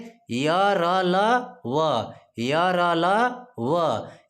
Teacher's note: जिन व्यंजनों को बोलते समय हमारी जीभ मुख के किसी भाग को स्पर्श नहीं करती उन्हें अंतस्थ व्यंजन कहते हैं